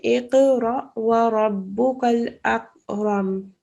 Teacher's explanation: This kaf is not a bouncing sound.